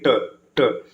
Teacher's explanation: मूर्धन्य व्यंजन क्या होता है, देखिए जब मूर्धन्य व्यंजन का उच्चारण किया जाता है तो जो जीभ होता है ये मूर्धा मतलब तालु के बीच का ऊपर वाला जो कठोर भाग होता है उसको स्पर्श करता है।